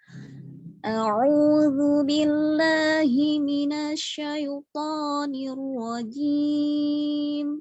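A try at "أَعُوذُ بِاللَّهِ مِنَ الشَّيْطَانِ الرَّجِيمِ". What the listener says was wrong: Mungkin syanya tafasyi, sifat tafasyinya kurang jelas dikit, dijelasin dikit aja.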